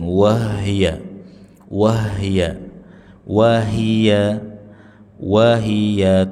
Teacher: perjelas harokat pada huruf ha jangan sampai mirip sukun